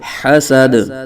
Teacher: آگے وقف حسد دال ساکن ہے قلقلہ خوب جاری کریں گے